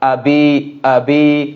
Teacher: এখানে হামজার উচ্চারণটি হলকের শুরু থেকে হবে